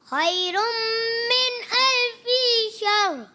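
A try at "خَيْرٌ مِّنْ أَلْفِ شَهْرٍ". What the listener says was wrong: الفی کی زیر کو ہم لمبا نہیں کریں گے. حرکت ہے, دوبارہ پڑھنے کی کوشش کریں.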